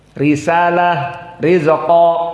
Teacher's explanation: Ra, kalau dalam keadaan kasroh maka dalam keadaan muraqqaqah.